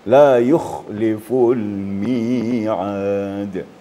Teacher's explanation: Kha harus ada getaran embel-embelnya.